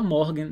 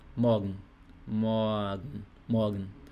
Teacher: R está antes de consoante, né? Então, R aqui tem som de A. Então não é morgen.